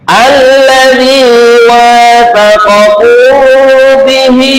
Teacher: Hamzah wasal ini kalau digabungkan hamzahnya tidak berbunyi. [mendengus] Tapi kalau dijadikan permulaan kalimat berbunyi yaitu fathah.